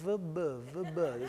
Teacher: And in fact, if you think about it, the V and the B are actually very similar sounds. In fact, one is a voiced labial fricative, and the other is a voiced labial plosive, linguistically speaking.